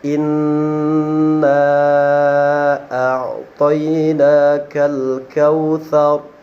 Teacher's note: Nah, maka huruf inilah disebut sebagai huruf gunnah. Adapun cara membacanya adalah dengan memperpanjang atau menahan daripada bunyi nun tersebut.